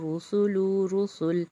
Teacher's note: یہاں پر را موٹا، را کے پر پیش ہے، سین سیٹی والا، ٹھیک ہے، اور لام باریک